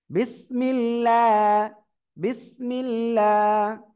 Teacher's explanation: যদি আল্লাহ শব্দের লাম এর ডান দিকে কি থাকে জের থাকে তাহলে আল্লাহ শব্দের লাম চিকুন হবে